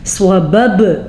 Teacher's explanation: صببنا باپ کے اوپر ساکن آ گیا ہے تو یہاں پہ بھی قلقلہ ہوگا